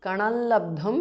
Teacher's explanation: Kanal labdhum because of sandhi. Anuswara changes to the nasal of la.